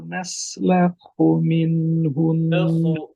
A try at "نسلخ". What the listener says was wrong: খয়ের আওয়াজটা একটু করেন নাসলাখু